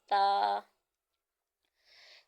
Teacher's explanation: जबान का सिरा और ऊपर के दांतों के अंदरूनी किनारे से यह अदा होता है और इसको भी हम एक सेकंड तक दराज करेंगे क्योंकि हरूफ